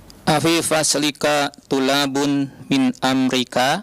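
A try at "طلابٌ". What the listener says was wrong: Tullabun ya Syekh. Lam musyaddada. Tullabun.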